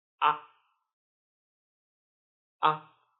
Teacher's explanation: It's relatively short and weak. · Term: neutral tone